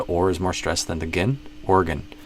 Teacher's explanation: the OR is more stress than the gin